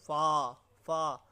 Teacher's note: महाप्राण होते हैं जिससे उच्चारण में ज़्यादा जोर दिया जाता है दोस्तों